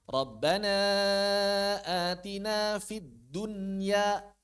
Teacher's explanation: walaupun nun bertemu dengan huruf-huruf yang biasanya diidgamkan, nunnya enggak idgham. Nunnya dibaca jelas